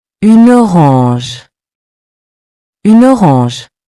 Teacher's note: the N is pronounced before the vowel